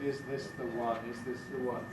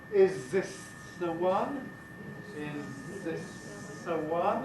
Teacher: in more rapid speech things stuff start happening it can be assimilated making it like a zed